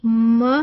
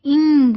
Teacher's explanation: तीनों में नोज involve है, एयर पैसेज नोज से वो ब्लॉक होना है, खुलना है, लेकिन पॉइंट्स तीनों डिफरेंट हैं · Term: नेजल